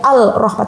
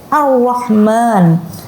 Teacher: lamnya tidak dibaca, bukan dibaca al-Rahman, tapi Ar-Rahman. Dia malah fokus kepada huruf yang selanjutnya, maka dia mendistraksi yang lamnya, langsung melebur kepada huruf yang selanjutnya. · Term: syamsiyah